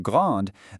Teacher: in the feminine grande, that E forces you to pronounce the D.